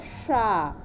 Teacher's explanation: ये तालव्य सा है, तालु के पास जीवा ले जाके बोलना चाहिए।